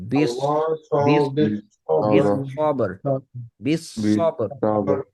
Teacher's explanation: সিন যেন না আসে, সদ ব্যাক অফ দ্য টাং উঠবে